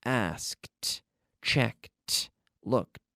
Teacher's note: Okay, the K, we have to squeeze a T sound in there. There's no extra syllable, but we're squeezing in that T sound.